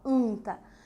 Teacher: Percebam lá atrás, ó, anta, que existe uma nasalização.